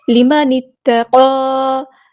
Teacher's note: لمن اتقى، ہم نے نون کو تا کے ساتھ ملا دینا، حمزۃ الوصل وہاں ڈراپ ہو جائے گا، قاف ہمارا ہیوی لیٹر ہے پورا ادا کریں گے، اور اگر ہم یہاں پہ وقف کریں تب بھی مد اصلی یعنی 2 کاؤنٹ ہمیں لمبا کرنا ہے، اگر وقف نہ کریں تب بھی ہم وصل سے پڑھیں تب بھی ہم نے یہاں پہ 2 کاؤنٹ لمبا کرنا ہے، یہاں پہ میں وقف کر رہی ہوں تب بھی میں 2 کاؤنٹ لمبا کروں گی۔